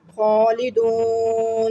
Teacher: خا کو پر پڑھا، ایک الف یعنی 2 حرکات کے برابر کھینچ کر پڑھا. دون پہ واو مدہ بنا، پھر وقف کی صورت میں مد عارض کیا.